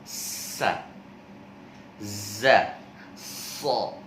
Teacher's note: tajamnya suara karena ia keluar dari celah yang sempit antara ujung lidah dengan dua gigi seri atas dan juga bawah. Ya, bisa dikatakan shafir itu adalah huruf yang ada desisannya.